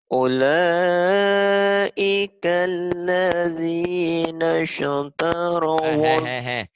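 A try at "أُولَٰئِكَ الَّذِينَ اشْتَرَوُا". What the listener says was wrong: Nasya tuh ya. Kalau ada huruf, jangan ada e-nya. Nas, jangan nasya.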